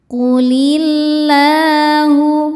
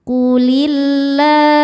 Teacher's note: Lam jalalah dibaca secara tarkik sebab baris sebelumnya kasrah. Cara bacanya lam dibaca tipis, lidah santai tanpa harus dinaikkan pangkal lidahnya.